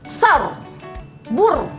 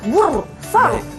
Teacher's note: Jadi sebelumnya baris atas ke baris depan ke mesti baca sar, bur. Ya, dia jadi tafkhim. Ra-nya tu mesti jelas, bur, sar.